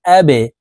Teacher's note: এখানে বা কলকলার হরফ আসছে এই কারণে এই বাটি নিচের দিকে ধাবিত করে ধাক্কা দিয়ে উচ্চারণ করব